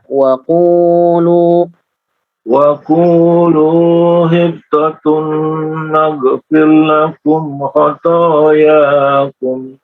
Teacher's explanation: Wa qulu qafnya 2 harokat, lamnya 2 harokat